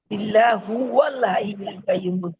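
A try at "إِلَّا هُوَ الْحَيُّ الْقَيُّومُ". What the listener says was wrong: হুম, হু ওয়াল হাইয়ুল কাইয়ুম। এখানে তো আলিফের ওই যে আলিফটার উপরে জবর অলরেডি আছে, এই জন্য আলিফটাকে আলাদা করেই পড়তে হবে। ইল্লাহুয়া তো থেমে গেলে ইল্লাহু।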